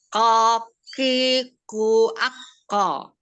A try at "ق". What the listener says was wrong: Ya, masih kurang ke atas. Jadi kalau mau latihan coba dari sukun ya. Nah, pada saat sukun itu terasa makhrajnya itu terasa, dia menempelnya terasa. Tapi kalau misalnya kita kasih harokat fathah kasroh dhammah dia akan menjauh nih. Tapi kalau kita sukunkan dia mendekat, makhrajnya bisa kita rasakan. Dia menempelnya waktu dia sukun. Ako. Bukan ka, tapi ko. Ako. Iya, hurufnya kof ya.